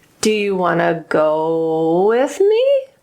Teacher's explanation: I went low on go, and I went super high at the end to indicate it's a question. It doesn't start with WH words. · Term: rising intonation